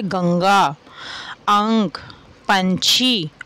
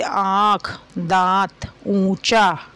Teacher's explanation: अनुस्वार में इसका उच्चारण करते समय केवल नाक से हवा निकलती है और अनुनासिक का उच्चारण करते समय मुख और नासिका दोनों से होता है